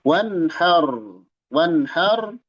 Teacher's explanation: Nun sukun fin nuni maal ha. Nun menghadapi ha. Wanhar dibaca jelas. Wan har rnya tebal. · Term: Izhar halqi